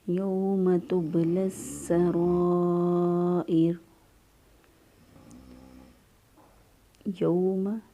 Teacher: یوم تبلی السرائر، یوم یا زبر واو، واو ساکن سے پہلے والے حرف پر زبر، یہ واولین ہے، نرمی سے، آسانی سے اور جلدی سے ادا کریں گے، لمبا نہیں کریں گے۔